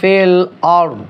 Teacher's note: রটা আপনারা একটু কি করবেন মোটা করে বলবেন